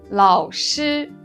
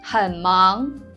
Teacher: when a third tone occurs before any other tone, it is pronounced as a low tone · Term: half third tone